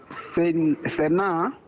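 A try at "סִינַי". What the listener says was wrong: Actually, this is I. It's a diphthong. It's a pataf and a yud makes the I sound. Sinai.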